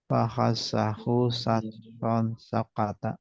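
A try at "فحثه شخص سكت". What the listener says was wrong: Ini sa ya. Bukan sin. Fahatsahu syakhsun sakata. Fahatsahu syakhsun sakata.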